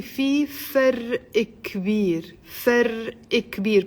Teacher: Put an imaginary kasra under the qaf to make the liaison.